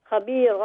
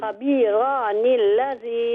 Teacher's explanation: had you stopped on khabira, then the alif will be a mad ivas and you will make a long khabira